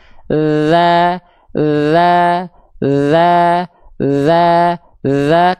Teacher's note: Bedanya sama huruf dzal dia enggak ngalir nafas tapi ngalir suara.